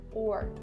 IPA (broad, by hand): ɔːr